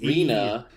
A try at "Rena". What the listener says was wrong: Yeah, don't give me a long A when I have a long E. That is really rude.